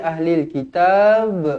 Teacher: pastikan dibaca melantun Qalqalah kubra